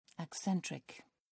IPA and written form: eɪˈsɛntrɪk (acentric)